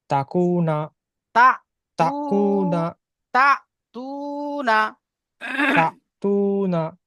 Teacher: একে ওয়াও মাদ্দা বলে। হুম একে এক আলিফ পরিমাণ টান দিয়ে পড়তে হবে।